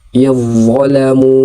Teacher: Seperti itu tulisannya dalam Al-Qur'an tetapi dibaca yadolamu menyambung ke d yang ditasydidkan sementara dalnya dianggap tidak ada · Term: idgham mutajanisain